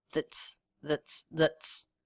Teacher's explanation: the pitch is flat the word is said quickly · that is unstressed the big clue is it's reduced we don't hear the a vowel we have a schwa that's that's that's and the pitch is flat the word is